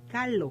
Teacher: sube la punta de la lengua para tocar los alvéolos dentales a un lado del paladar no vibra en lugar de vibrar deja sacar el aire y entonces se pronuncia en lugar de decir carro dice carlos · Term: por sustitución